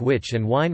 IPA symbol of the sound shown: ʍ